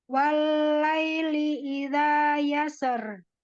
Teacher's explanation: Ya, yasser gunakan sedikit lagi ditebalkan huruf ro-nya karena di sini termasuk tafhim untuk diwakof